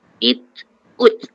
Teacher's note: kita kena sebut ta itu selepas menyebut makhraj ta, kita kena keluarkan dia angin sedikit, itu alhams